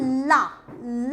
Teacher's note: ला बोलते समय देखो जीभ के दोनों किनारों से हवा बाहर निकल जाती है और वर्ण का उच्चारण होता है। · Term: पार्श्विक व्यंजन